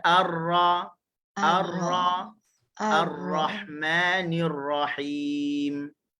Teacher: Okey, dan sifat dia adalah tawassut, pertemuan ujung lidah dengan langit keras tak rata tu, dia tak kuat. Maka terhasillah sifat takrir pada huruf ra.